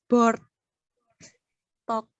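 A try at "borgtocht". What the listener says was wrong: Bortoh. Bukan bortok, Bukan bortok, tapi bortoh.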